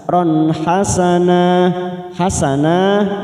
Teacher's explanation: Kalau kelas sugro kita pantulkan ajron ron, ada huruf fathatan, ada huruf ro berharokat fathatan min bertemu ha, kita baca jelas ron hasanah. Hasanah, nah kita panjangkan 2 harokat mad iwad